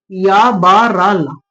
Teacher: य ब र ल कम वायु हवा निकल रही है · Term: अंतस्थ व्यंजन